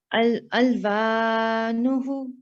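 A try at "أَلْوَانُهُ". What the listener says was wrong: Yes, and you missed this prolongation of 2 seconds last time. So it is alif maddiya. Because its previous letter is carrying a fatha.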